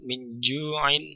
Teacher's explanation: nun mati bertemu dengan jim, maka ketika kita membaca nun, maka perangkat kita sudah bersiap-siap pada posisi makhrajnya jim, ya. Min ju'in, ya, di tengah lidah, ya, jim, dan kita sudah bersiap-siap di sana ketika kita membaca nun. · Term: ikhfa